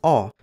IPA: ɔ